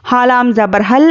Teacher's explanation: अलिफ और लाम हो तो हम अलिफ को नहीं पढ़ेंगे, लाम से मिलाकर पढ़ेंगे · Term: हुरूफ खमरी का कायदा